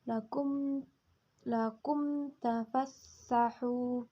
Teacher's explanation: hukum izhar syafawi karena huruf mim sukun bertemu dengan huruf ta cara membacanya dengan jelas